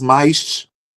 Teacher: esse S final pode ser um S assim, pode ser um som de che, né, como os cariocas